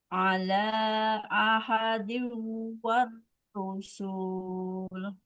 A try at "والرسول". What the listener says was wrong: Bukan ru. Warro. Warrasulu.